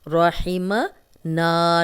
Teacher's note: اور رحمنا، رحمنا، را پہ زبر ہے تو را کو موٹا پڑھیں گے۔ رحمنا، نا کو 2 حرکات لمبا کریں گے